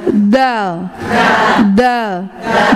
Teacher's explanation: ujung lidah dirapatkan dengan gigi seri atas